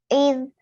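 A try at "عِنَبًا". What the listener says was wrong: Not I. It's E. Not I. It's E.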